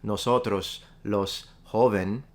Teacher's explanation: it's becoming basically all the S's are dropped